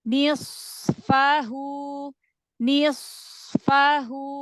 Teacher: Shad itu punya sifat rakhwah mengalir nafasnya · sod itu punya sifat rokhwah, mengalir nafasnya. Ketemu dengan huruf setelahnya berharokat, berarti panjangkan rokhwahnya.